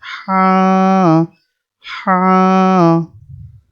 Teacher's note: এটা আওয়াজ একটু কম হবে, গলার ভিতর থেকে বলতে হবে। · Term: ছোট হা